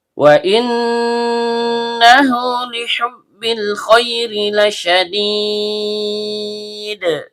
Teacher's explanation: Nun ujung lidah bertemu dengan langit-langit bagian tengah. Karena nunnya bertasydid, maka hukum bacaannya gunah asli. Dibaca dengung dan setiap dengung keluar dari hidung. H tenggorokan bagian bawah.